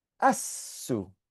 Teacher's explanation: So you don't hear the lam because that hamza that makes the sound is a different kind of hamza. It's called the hamzatul wasl.